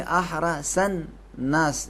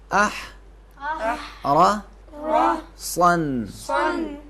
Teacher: اب یہاں پڑھیں گے احرا سن ناس، یہ بالکل غلط ہے کیونکہ سین اور صاد میں فرق نہیں ہوگا۔ صاد کو تھوڑا سا موٹا کریں گے